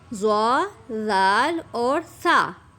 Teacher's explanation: ان کی آپ نے نوک کے ساتھ یہ دیکھیں بالکل یہ سامنے نظر آ رہا ہے، یہ بالکل آپ نے اس کو نوک کے ساتھ لگا دینا ہے. زبان کو نوک کے ساتھ لگائیں گے اوپر والے دانتوں کے کناروں کے ساتھ